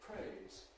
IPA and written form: tjuːn (tune)